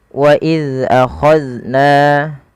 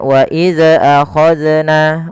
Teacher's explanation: Karena salah satu sifat zal itu tidak boleh mantul, karena zal bukan huruf-huruf qalqalah, maka tidak boleh terpantulkan ketika melafalkannya.